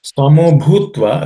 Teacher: again the bhutva, the bhu is again aspirated.